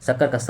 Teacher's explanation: शक्कर का स जो है अघोष व्यंजन भी है। उष्म भी है और महाप्राण व्यंजन भी है।